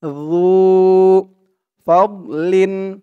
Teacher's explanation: আল্লাহ যু ফাদলিন যু একালিফ টান পেশের পরে ওয়াও সাকিন যু জালের উচ্চারণটা একদম নরম পাতলা করতে হবে জিহ্বার মাথা উপরের দাঁতের মাথার সাথে লাগবে জালের উচ্চারণটা করার সময় যু ফাদলিন ফাদ ফা দিয়ে দদ ধরবে